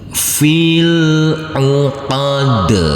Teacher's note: Huruf dal yang berkasroh i ini, karena kita berhenti di sini di huruf terakhir, maka harus kita baca dengan sukun mati, yaitu huruf dal. Dan karena huruf dal termasuk bacaan qalqalah, maka harus kita pantulkan